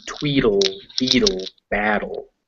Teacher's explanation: they're written with T's, but you can say them more like a D